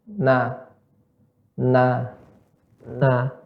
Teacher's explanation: Yang pertama ketika dia berharakat, na, masuk hidung, halus dia